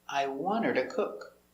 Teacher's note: The to is not to, it's ta or da.